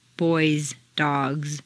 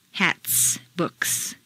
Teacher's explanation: a plural noun that ends in a z sound boys dogs rather than S sound hats books